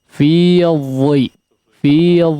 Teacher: di situ dha ya berharakat kasrah, meskipun dia berharakat kasrah tetap silahkan menjaga ketebalannya ya